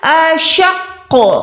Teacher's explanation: پہلے قوف کو آپ نے شین کے ساتھ ملانا ہے، پھر قوف پہ آپ نے قلقلہ کرنا ہے